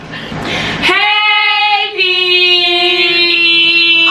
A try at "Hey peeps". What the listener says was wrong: You said hey, drag out the hey, not the p.